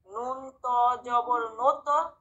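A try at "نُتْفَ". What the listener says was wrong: এটা জবর না, এটা পেশ। জবর হইলে হবে না তো।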